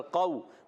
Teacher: قاف واو زبر قو، واو ساکن سے پہلے زبر، واو لین، نرمی سے ادا کریں گے